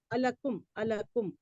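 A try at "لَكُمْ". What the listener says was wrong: इसको आ को अलग कर दें, आ लकुम, लकुम, अलकुम नहीं पढ़े, आ अलग करें।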